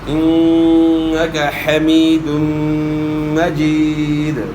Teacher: یا ساکن سے پہلے زیر ہے، تو زیر کو آپ کھینچیں گے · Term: یا مدہ